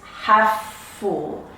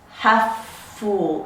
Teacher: I'm only saying the consonant sound once. Half full. It's being carried over into the next word.